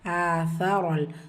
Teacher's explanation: உங்களுடைய நுனினாக்கு மேல் பல்லுடைய கீழ் ஓரங்களில் உரசி சா உச்சரிக்கணும். ரா ஃபத்ஹா பற்றி வந்திருக்கு, வல்லினமாக ஓதணும்.